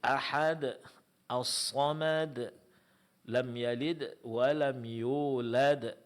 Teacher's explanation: huruf yang diqalqalakan di sini hanya ada satu huruf, yaitu huruf dal, dan itu ada pada setiap akhir ayat